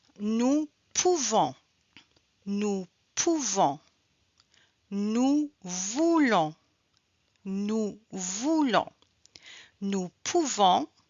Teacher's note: Avec nous, on entend le son on pour ces verbes à la conjugaison du présent.